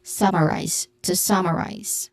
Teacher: Pronunciation wise, focusing on summarize, which has a stressed syllable on the first syllable, so summarize. It ends with a buzzing sound, letter Z sound.